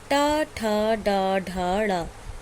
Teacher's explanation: इसका उच्चारण स्थान है मूर्धा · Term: टा वर्ग